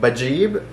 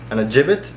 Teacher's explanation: the long vowel of ya has turned into a short vowel, which is kasra